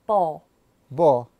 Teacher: Notice how he didn't say his dark L's